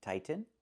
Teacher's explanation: We cannot pronounce the T as a fast D. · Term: real T